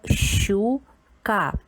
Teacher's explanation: Перший звук ш ми також чуємо як два звуки ш, ч, два твердих